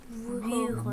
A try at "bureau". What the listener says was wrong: Bureau. bureau. Non, il faut un U. Bureau.